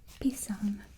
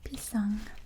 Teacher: So you don't pronounce the G. It's kind of like in English where the N makes it sound.